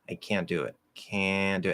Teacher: when you nasalize that a, you don't have to go up into n anymore.